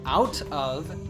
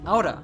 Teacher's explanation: doesn't say out of he says Oda is one connected without we often remove the F or V sound in of